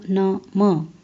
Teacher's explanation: इनका उच्चारण करते समय मुख के साथ नासिका का भी प्रयोग होता है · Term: अनुनासिक